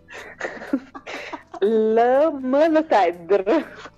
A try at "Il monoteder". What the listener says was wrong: Neanche un minimo di pronuncia, dico, cioè, proprio così come l'ha scritto, l'ha letto, è come l'inglese, devi leggerlo, sai, devi dare un po' di Multedr, ma c'è il nome, non lo so, ma mi sta prendendo in giro.